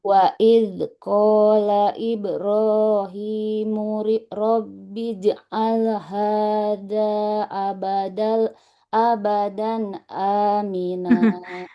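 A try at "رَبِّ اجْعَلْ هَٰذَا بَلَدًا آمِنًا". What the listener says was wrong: Bukan abadan ya. Rabbi ja'al hadza baladan. Enggak ada hamzahnya. Bukan abadan. Ini bukan hamzah ya. Alif mat.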